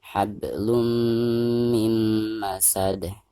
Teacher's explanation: harus diidghamkan langsung ke huruf mim yang ada di depannya disertai dengan gunah atau dengan genung ya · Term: idgham bigunah